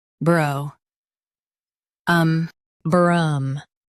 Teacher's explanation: Stress brough and keep um soft.